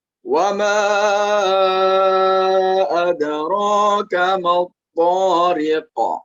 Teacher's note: Nah, di sini di wama ya, di wama di sana dibaca 5 harokat karena hukum bacaannya mad jaiz munfasil.